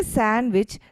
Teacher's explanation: the stress is placed on the ah part which is English a part but there is no accent mark